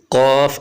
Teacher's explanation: زبان کی جڑ جب کوے کے قریب سے نرم تالوں سے لگے تو اس سے حرف قاف ادا ہوتا ہے۔ قاف کو اوپر پڑھنا ہے اور ہونٹوں کو بالکل بھی گول نہیں کرنا ہے۔